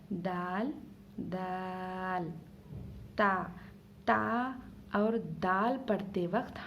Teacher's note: जुबान की नोक और ऊपर के दांत की जड़ को लगाने से तो ता और डाल अदा होते